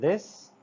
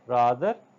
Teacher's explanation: The air is forced through upper teeth and tongue, and it is also a dental sound.